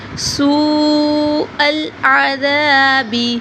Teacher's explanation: آگے حروف مد ہے، سوء العذاب، سین کو لمبا کریں گے، ذال کو نرمی سے ادا کریں گے اور تھوڑا سا لمبا کریں گے